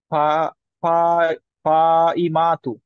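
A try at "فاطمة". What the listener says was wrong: এটা ত। ত।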